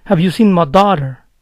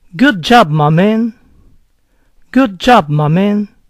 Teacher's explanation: My, delante de una palabra que empieza con consonante, puede oírse a veces ma.